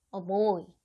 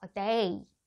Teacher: B, D, G로 시작하는 단어 앞에 어 같은 모음을 하나 붙여서 이어서 발음을 하는 거예요. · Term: 삽입 모음